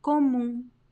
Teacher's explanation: There's no M sound. It ends with UM, but there is no M sound. Comum is just a nasal U.